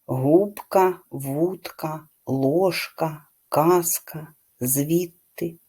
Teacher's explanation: дзвінкі перед глухими в українській мові майже не уподібнюються